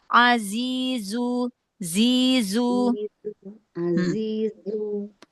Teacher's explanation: Jangan menutupi celah antara gigi seri atas, gigi seri bawah, biar sofirnya jelas keluarnya, ya. Karena sofir itu keluarnya dia dari celah gigi seri atas, gigi seri bawah. Jadi jangan ditutupi dengan ujung lidah.